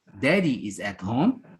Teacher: the rising tone at the end of the question it's clear for us that this question is called a declarative question